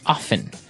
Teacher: time now with pronunciation some people like to pronounce often right they kind of leave out the strong t sound well other people say often that's right both forms are correct